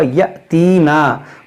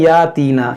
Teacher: हमजा साकिना है, इसमें झटका होगा यअतीना, बाद में क्या पढ़ते हैं यातीना, इस हमजा को झटका नहीं देते हैं।